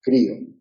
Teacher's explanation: en el encuentro de las vocales la tónica es la alta o cerrada